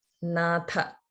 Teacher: And also Tha in Natha. Natha. That is also Mahaprana.